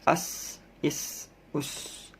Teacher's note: Sin termasuk huruf sofir berdesis, memiliki sifat sin. Jadi ada desisnya.